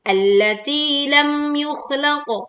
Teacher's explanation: jelaskan mim sukun tanpa mendengung, tetapi juga tanpa memantul.